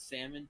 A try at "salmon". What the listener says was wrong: two different ways. Pronounced it with the L and without the L. Why do you pronounce it with the L? It's not salmon, it's salmon. The L is silent. No, it's salmon. You're wrong.